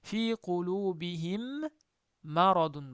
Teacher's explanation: sukunli mimdan keyin yana mim kelsa, shu birinchi mim ikkinchisi mimni ichiga kiritib g'unnali o'qiladi. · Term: idg'om